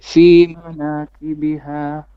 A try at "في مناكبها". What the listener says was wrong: Now, manakibiha is one word, so try not to pause in the middle of it.